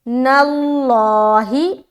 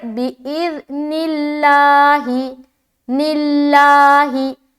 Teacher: لفظ اللہ کو ہم باریک رکھ رہے، کیوں؟ کیونکہ نون کے نیچے زیر آ گیا، اگر نون کے اوپر پیش ہوتا یا زبر ہوتا تو لفظ اللہ کو موٹا کرتے۔